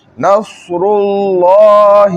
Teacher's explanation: अल्लाह का लाम क्या है मोटा है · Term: लाम मोटा